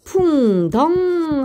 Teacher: 무겁고 어두운 소리는 풍덩이 되죠. 우모음과 어모음, 음성모음이 음성모음과 어울렸어요